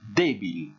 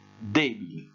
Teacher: vous avez pu remarquer que j'ai insisté sur la première syllabe